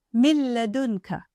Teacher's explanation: When Ra and La come after the Noon Sākin or Tanwīn, they merge completely, which means there is no Na sound left from the Tanwīn or Noon Sākin.